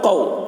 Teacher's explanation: تو حروف لین کو بھی معروف پڑھنا ہے اور جلد پڑھنا ہے، کھینچنا نہیں ہے